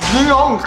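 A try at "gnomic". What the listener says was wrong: Mali! Silent G yan. Ang tamang basa niyan, nomic. Nomic.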